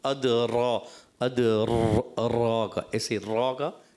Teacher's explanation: را کے اندر جو ہے نا آپ تکرار اصلی کرتے ہیں، اس کو کہتے ہیں یہ کئی را پیدا ہونا. یہ منع ہے، کئی را پیدا نہیں کریں گے.